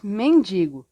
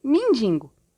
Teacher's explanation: ocorre a nasalização do I e a elevação de vogal no EM , ou seja, mindingo, o EM vai virar IN, e a